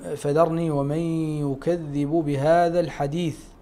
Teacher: عند الوقف عليها نكون أمام مد عارض للسكون